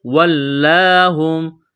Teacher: یہاں لام کو دبانا ہے تشدید کی وجہ سے ، ایک الف کے برابر کھینچنا ہے، ایک کڑا زبر کی